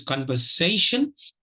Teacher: the third syllable is s and not z.